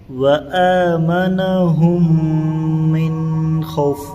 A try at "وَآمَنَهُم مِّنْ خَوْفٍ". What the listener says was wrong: تو من نہیں ہوگا، یہاں اخفا نہیں ہوگا، اظہار ہوگا، وآمنہم، یہاں پر ادغام مع الغنہ ہے، یہاں پر غنہ ہوگا